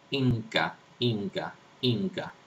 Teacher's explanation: Es un alófono cuando se pronuncia la N, cuando se pronuncia una nasal alveolar y se escribe una nasal alveolar antes de una velar. Por ejemplo, antes de una implosiva velar como K o G. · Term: velar nasal